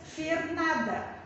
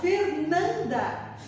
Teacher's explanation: Então, o Fernanda fecha esse A, o M fecha o A, dá uma fechadinha na pronúncia do A, então é o sinal de nasalização.